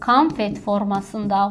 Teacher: vurğusuz hecada A kimi tələffüz olundu, vurğulu hecada O kimi tələffüz olundu